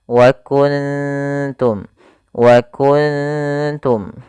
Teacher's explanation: Ikhfa ini kita namakan ikhfa hakiki, bukan ikhfa syafawi, yaitu terjadi apabila ada nun sukun bertemu dengan salah satu huruf ikhfa, yaitu di sini huruf ta. Maka cara membacanya yaitu suara nunnya disamarkan kepada huruf ta-nya